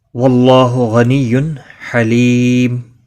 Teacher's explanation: اللہ کا لام زبر کی وجہ سے پر پڑھا جائے گا، اس کے اوپر کھڑی زبر بھی ہے، ایک الف کے برابر کھینچ کر پڑھیں گے۔